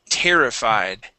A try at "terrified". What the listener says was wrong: Okay, give me the D at the end. Terrified. Yeah, and that D is just very light.